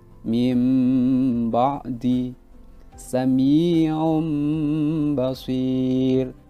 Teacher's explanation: maka kita harus mengganti nun sukun dan ba itu menjadi huruf mim, seakan-akan menjadi huruf min. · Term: iqlab